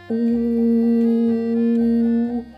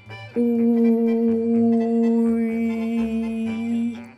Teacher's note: You start with the long sound U, like in Uber. Ooh. Continue ooing and then stretch your lips in a wide smile. Ooh. And allegedly something akin to a Russian sound Y or a satisfied grunt of the caveman should come out.